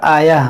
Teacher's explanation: یہاں پر دیکھیں ہماری سانس ٹوٹ گئی تھی تو ہم نے کیا پڑھا آیہ. گول تا پر جب بھی آپ وقف کریں تو وہاں پر اسے ہا ساکنہ سے بدلیں